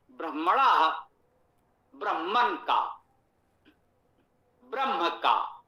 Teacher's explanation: मूर्धन्य वर्ण के होने पर ना का मूर्धन्य ण हो जाता है